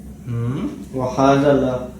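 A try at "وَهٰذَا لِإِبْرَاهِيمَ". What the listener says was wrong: لا نہیں ہے، یہ لی ابراہیم، ٹھیک ہے. اصل میں تھا کیا، یوں تھا نا ابراہیم، اس کے پیچھے جب لام سے لی آئے گا نا یوں کر کے تو اس کو لکھیں گے ایسے،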